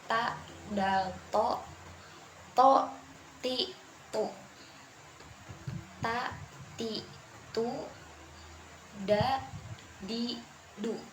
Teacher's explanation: Landasan atau tempat menempel ujung lidah berikutnya adalah ujung lidah dan pangkal gigi seri atas